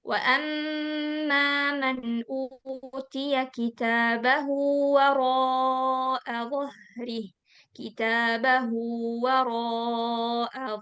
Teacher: Ketika ada kata ganti ee atau dia atau hu ya emm lafalnya itu hu atau h kita baca dua harakat. Kitabahu itu artinya bukunya sehingga kita panjangkan dia dua harakat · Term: madilah sughara